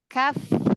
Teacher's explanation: Langit atas. Pangkal lidah bagian bawah bertemu dengan antara langit-langit yang lunak dengan tulang yang keras. Jadi itu terjadi pada huruf kaf, ya, kaf.